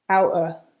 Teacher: in fast speech, the vowel changes to a schwa and often we drop the end of the word. So you'll just hear outer.